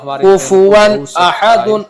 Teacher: میں سے یعنی 6 حرفوں میں سے حمزہ آیا ہوا ہے، تو یہاں پر تنوین کو ظاہر کر کے بغیر گنہ کی جلدی پڑھیں گے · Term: اظہار